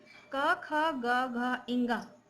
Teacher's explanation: इन वर्णों के उच्चारण में मुख से निकलने वाली वायु कंठ का स्पर्श करती हुई बाहर आती है और व्यंजन के रूप में ध्वनि फूटती है।